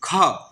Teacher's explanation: ख हवा निकल रहा है तो उसे क्या बोलते हैं तो महाप्राण बोलते हैं